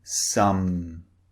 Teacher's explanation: The lips are closed and the air is coming through the nose this time.